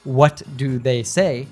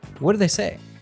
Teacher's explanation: he reduced the do to duh